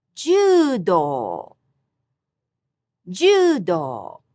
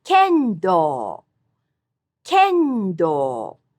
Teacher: All these have high-low pitch accent.